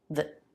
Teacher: in many cases, we reduce the vowel from a to the schwa.